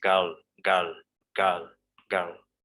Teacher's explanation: r is completely silent